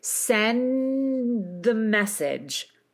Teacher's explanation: But if you are going for that true general American accent, that really precise kind of speech, then you're going to take what we did in the last context. You're really going to sustain that N. And you're going to move right into the D, but this time, because we're going into a consonant, you don't explode the D quite as much. Okay, so you sustain the D, you sustain the N, sustain the D, and then keep your voice going as you move into the next sound.